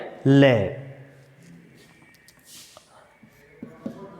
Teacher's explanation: पार्श्विक में क्या होता है कि जीवा जब दंत को स्पर्श करती है तो वायु अगल बगल से बाहर निकल जाती है, पास से बाहर निकल जाती है, वो है ले।